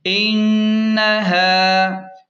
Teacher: ان ہا الف زبر ہے اس کو کھینچیں